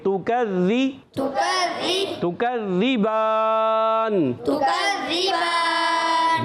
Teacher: اچھا تکذی، تکذی یہاں تک یہ حرکات ہیں، پھر با پر کھڑا زبر یہ ایک الف کھینچیں گے، تکذی تکذب تکذبان، تکذبان با کھڑا زبر ہے، کھڑا زبر ایک الف کھینچ کر ادا کرتے ہیں، اس کے بعد آپ دیکھیں سکون عارضی ہو گئی تو مد عارض ہو جائے گا، ٹھیک ہے؟